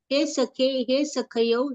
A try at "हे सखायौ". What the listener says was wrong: हे सखायव, सखायव क में क्या है, आ है, दीर्घ आ, सखायव सखयो नहीं, सखायव सखायव,